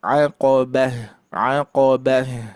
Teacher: coba hurufnya agak tebal baru ditipiskan di ba